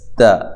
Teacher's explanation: تا باریک ہے اور زبر ہے، زبر کی وجہ سے لمبا نہیں کرنا، باریک حرف کی وجہ سے اس کو باریک پڑھنا، موٹا نہیں پڑھنا